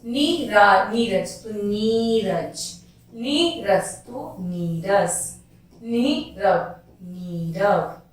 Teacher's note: यदि किसी विसर्ग के बाद में र हो तो विसर्ग का लोप हो जाता है और उससे पूर्व का स्वर दीर्घ हो जाता है।